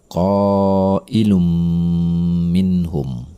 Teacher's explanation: Cara membacanya, tanwin tersebut melebur kepada huruf berikutnya. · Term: idgham bi gunnah